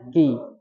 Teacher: Kalau huruf qo itu nempelnya di langit-langit yang lunak saja. · Kalau K itu berada di tengah-tengah antara langit-langit keras dan lunak. Jadi bunyinya Ki. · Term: huruf K